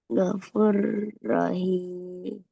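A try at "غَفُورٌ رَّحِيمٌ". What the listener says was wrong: Panjang ya. Ada wow di sini. Ada huruf mat.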